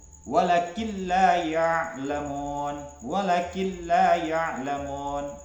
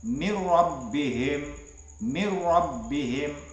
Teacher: cara membacanya yaitu dengan mengidghamkan ya Nun atau tanwin pada lam atau ro tetapi tanpa adanya mendengung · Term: idgham bila ghunah